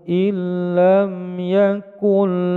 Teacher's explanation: Ini bacaan idgham bila guna. Nun sukun bertemu dengan lam, in menjadi il, lam yakun menjadi yakul. Idgham bila guna.